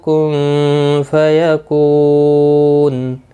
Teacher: نون ساکن کے بعد حروف اقفا کا فا آیا، اخفا حقیقی ہوگا، یکو کو واو مدہ ہے، نون وقف کی صورت پہ نون ساکن پڑھا جائے گا، وقف بالاسکان ہوگا، مد العارض وقفی ہوگا، 3 سے 5 الف کی مقدار کے برابر کھینچ کر وقف کریں گے۔